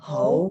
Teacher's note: ho is your second tone, the rising, mid-rising.